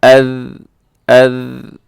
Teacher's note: اسے بہت نرمی کے ساتھ پڑھا جاتا ہے، اس میں کوئی سیٹی نہیں ہے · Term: ذال